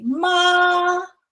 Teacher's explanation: Every time you see first tone, you need to put your arms above your head and go like this. Okay, so it's flat, it's long, and it's really above your head